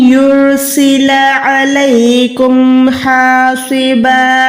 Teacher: रॉ यहाँ पर मोटी है क्योंकि रॉ से पहले पेश है। रॉ साकिन से पहले जब भी पेश आता है तो रॉ को मोटा अदा किया जाता है।